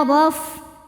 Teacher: ro dibaca tafkhim karena berharakat fathah dibacanya tebal. Rof roffin ro kedua juga tafkhim karena berharakat fathah maka ro nya tebal.